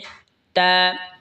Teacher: তা জিহ্বার আগা সামনের ওপরের দুই দাঁতের গোড়ার সঙ্গে লাগা উচ্চারণ হবে তা